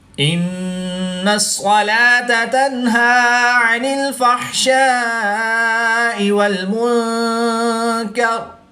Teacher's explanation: وقف کی حالت میں را کی زیر کو ساکن کر کے پڑھیں گے۔